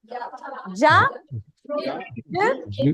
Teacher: we don't have that y sound sneaking in